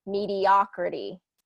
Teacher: mediocrity changes that o to a short ah pronunciation